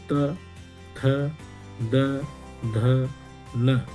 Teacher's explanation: ये जो वर्ण हैं इनका उच्चारण दांतों की सहायता से किया जाता है, इसलिए इनको कहा जाता है दंत्य वर्ण।